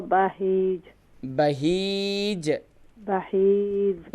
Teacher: ہاں یا زیر ہی نہیں ہوگا, بلکہ اسے ایک الف کی مقدار کھینچیں گے, کیونکہ یائے مدہ ہے یہاں پر